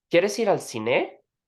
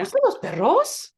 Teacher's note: they raise their voice in a lot of yes and no questions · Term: sing-songy accent